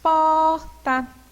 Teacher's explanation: quando nós falamos porta, qual que é mais forte? O pó. Então, por essa razão, nós vamos chamar, né, essa palavra de paroxítona, porque na separação, né, é a penúltima sílaba que é tônica.